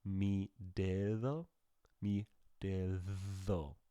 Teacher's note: that second D kind of could almost be a th sound if you just changed the placement of your tongue.